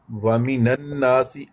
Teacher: واو ہونٹو کو گول کر کے ادا کرتے ہیں. وَمِنَ النَّاسِ، الناس نون مشدد غنہ کیا جاتا ہے. · الناس نون مشدد غنہ کیا جاتا ہے. الناس الف خالی، اس سے پہلے زبر، حروف مدہ میں ہے.